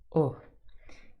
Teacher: U is called a near, close, back, rounded vowel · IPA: /ʊ/